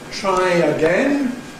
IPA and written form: ˈtraɪ əˈgen (Try again)